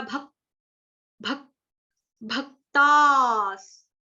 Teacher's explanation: भ के ऊपर जो आप देख रहे हो आघात, आधे क का लगेगा